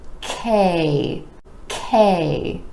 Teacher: the tongue is rising up towards the palate ke ke now the consonant is an air puff sound meaning it's made with a tiny puff of air and you want to make sure that ke gets the puff